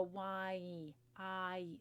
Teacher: when we break it down we've got two vowel sounds going on in there the ah and the e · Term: diphthong